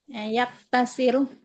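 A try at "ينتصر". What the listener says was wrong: yantasiru harusnya, bukan yaktasiru. Yantasiru. Yantasiru berarti nun sini. Yantasiru.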